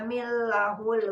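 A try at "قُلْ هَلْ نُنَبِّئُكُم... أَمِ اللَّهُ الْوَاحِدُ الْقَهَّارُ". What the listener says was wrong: panjangin amillahul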